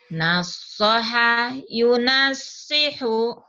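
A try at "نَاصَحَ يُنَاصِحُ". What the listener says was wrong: Enggak usah pakai lagu ini dulu ya sini, Bu. Ini lagu pesantren. Yuk lagunya gitu.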